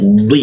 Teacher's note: huruf di lidahnya itu ditempelkan ke geraham karena ini lafaznya i ya maka ada hentakan ya di seperti itu.